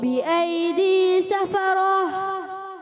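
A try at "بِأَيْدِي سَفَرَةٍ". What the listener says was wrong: आखिर में हा को थोड़ा वाज़ेह करें। बिअयदी सफरह।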